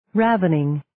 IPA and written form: 'rævənɪŋ (Ravening)